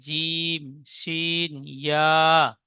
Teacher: 6 নম্বর মাখরাজ, জিভের মাঝখান এবং তার বারাবার উপরে তালুর সাথে লাগিয়ে উচ্চারিত হয়